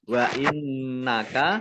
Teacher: Qaf lam tanda waqaf boleh terus, tetapi berhenti lebih baik. Wa innaka, nun tasdid dibaca gunnah, ditahan 2 harokat.